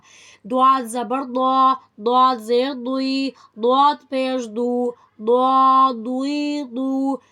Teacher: زبان کے کنارے جب اوپر کے داڑوں سے لگتی ہے تب ہمارے پاس ضاد ادا ہوتا ہے. side of the tongue touching upper molars then we can pronounce ضاد.